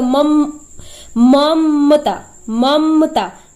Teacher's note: इसमें म जो है उसका उच्चारण हम जल्दी से कर लेंगे, अ का उच्चारण नहीं होगा